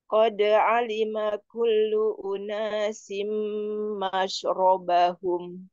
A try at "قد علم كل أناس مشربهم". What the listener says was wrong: Nah, jadi itu seperti memanjang ya. Jadi harusnya langsung saja ke sukun shin dan shinnya berikan sifat tapasinya. alima kullu unasim mashrobahum. Jangan memanjang maknya. Jadi langsung mashrobahum. Sekarang cupnya. Cupnya kurang pas di Kurang pas di harusnya ku kulunasin, tapi memang jangan berlebih juga ya harusnya.